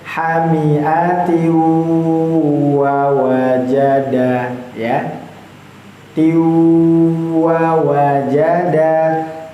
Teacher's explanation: dengungnya itu yang enggak terlalu banyak di hidung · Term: idgham mutajanisain